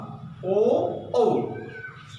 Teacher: ई ओ औ के जे उच्चारण स्थान छै वो अहाँके कंठ और ओष्ठ एहि दुनू वर्ण जे छै से वांग अंग से होइ छै। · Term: कंठ ओष्ठम